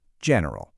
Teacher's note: In the UK it's often kind of clipped, two syllables, general. But over in the US, we usually stick an extra one in the middle.